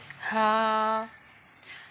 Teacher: کھڑی زبر کو تقریباً 1 سیکنڈ کے لیے لمبا کرنا ہے